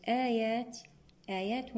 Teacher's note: تقدمت الهمزة على حرف المد صار عندنا مد بدل بمقدار 2 حركات